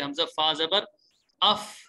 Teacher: فا کا اس لیے تھا کہ اوپر والے دانت اور نیچے والے ہونٹ تھے